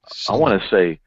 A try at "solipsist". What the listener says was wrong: You got the wrong emphasis on the wrong syllable.